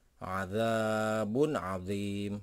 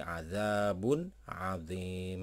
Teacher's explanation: Domah tain ketemu dengan huruf izhar, maka akan dibaca dengan jelas.